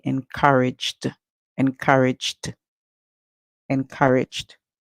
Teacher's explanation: going to add the Ed sound because we can hear the J sound at the end the ed sound would be D